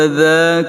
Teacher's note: Wa idza makhrajul adza, keluar ujung lidah sedikit, bacaan yang lembut dan panjang